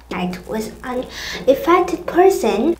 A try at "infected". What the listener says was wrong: Infected, thiếu chữ C. Infected person.